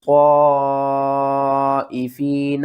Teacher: یہاں پر ہم نے طا کو موٹا کر کے بھی پڑھنا ہے، مد بھی کرنی ہے کھینچ کر